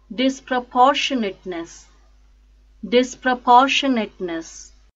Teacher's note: The stress is on 3rd syllable, por.